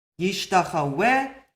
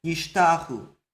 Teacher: Yishtachu is the same word as Yishtachaweh. But in Yishtachu, this wow is now a vowel. and if it's pointed, you'll see a dot inside to show you it's a vowel.